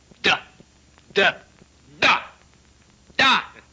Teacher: la consonne D, par exemple, se prononce en donnant du bout de la langue au-dessus des dents d'en haut